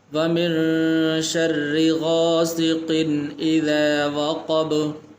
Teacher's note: تنوین کے بعد حروف حلقی میں سے ہے حمزہ، تو اس لیے یہاں پر غنہ بھی نہیں کریں گے